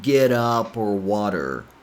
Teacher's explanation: T becomes a flap T or fast D sound